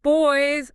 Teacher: my lips press firmly together to make the B sound. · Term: bilabial sound